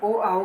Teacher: मतलब आ प्लस ऊ से मिलता है ओ, तो आ जो है कंठ है और ऊ जो है ये ओष्ठ है, तो कंठोष्ठ बन गया।